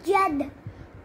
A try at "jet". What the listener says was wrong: Jed or jet? Yes, you have to say ter. Ter sound should come at last. Okay, jet.